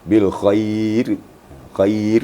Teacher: ro itu mati dan sebelumnya baris di bawah maka ro itu tarkik atau tipis ya Jadi kalau tipis itu baris di bawah atau sebelumnya baris